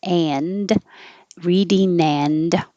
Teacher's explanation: the n will connect to the a